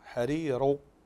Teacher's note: تستعلي باللسان عند النطق بالراء المفخمه · طيب حرير في حال الوقف كلتا الراءتين مرققة، فنرقق الراء الأولى حرير لأنها مكسورة، ونرقق الراء الثانية كذلك لأنها مكسورة، لأن وقفنا على ساكنة وقبلها حرف مد، لكن في الوصل تفخم لأنها تصبح مضمومة حرير، فتفخم، تستعلي اللسان، تستعلي باللسان عند النطق بالراء المفخمة